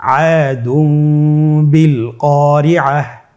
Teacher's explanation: তানবিনকে মিম দ্বারা পরিবর্তন করে গুন্নার সহিত পড়ব